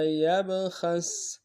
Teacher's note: خا کو موٹا ادا کرتے ہوئے سین کے سامنے لانا ہے. سین کو باریک ادا کریں گے.